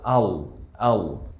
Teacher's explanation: আমরা এটি উচ্চারণ করার সময় জিভ তালুর সাথে লেগে যাবে